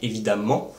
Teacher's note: on va placer l'accent tonique français sur la dernière syllabe, comme dans par exemple évidemment, vous entendez le ment qui est accentué, mais par rapport à d'autres langues, c'est très très faible.